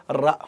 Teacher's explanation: రంపం అన్నప్పుడు ఈ నాలుక కొనబోయి ఆ దంతమూలాన్ని కొడుతుంది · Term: సాధురేపం